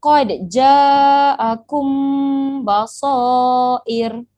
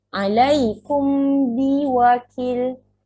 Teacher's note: Awak jangan terlalu rapatkan tapi kena renggangkan sedikit. Pastikan bunyi mim tu kena sembunyikan kepada huruf ba. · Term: ihfa' syafawi